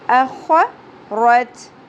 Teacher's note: خاء پر ہوگا خراش کے ساتھ، کھردہ حرف ہے